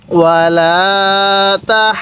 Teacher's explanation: আমি কিন্তু আগে হায়ের মধ্যে 4 আলিফ টান দিয়ে দিছি, তারপরে আমি হাকে দদের সাথে লাগিয়ে দিছি।